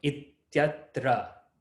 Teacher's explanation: I have E next to a. So the E gets replaced by ya, according to yaṇ-sandhiḥ. So it becomes ityatra.